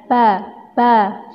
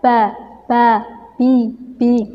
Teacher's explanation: huruf ba' ini keluar dari dua bibir kita